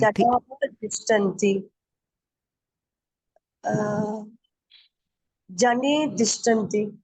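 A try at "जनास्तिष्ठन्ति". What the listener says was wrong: No, sakara. Visarga is replaced by sakara. Janas tishtanti. So janaha tishtanti. When followed by ta, there is compulsory sakara desha. So janas tishtanti. And there is no further sandhi which can happen.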